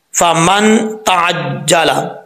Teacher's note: नून साकिन के बाद ता आ रहा है, तो नून साकिन का इख्फा होगा। इस बात का आपने ख़ास ख्याल रखना है, एक अलिफ की मकदार गुना किया जाएगा।